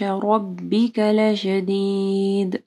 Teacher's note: بطش طوا کے اوپر کلکلا ہوگا اور طوا کو موٹا پڑھنا ہے. ربک رو ہیوی پڑھی جائے گی، رو کے اوپر زبر ہے